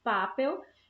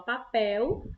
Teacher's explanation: a sílaba mais forte é pel é a última sílaba da palavra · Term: oxítonas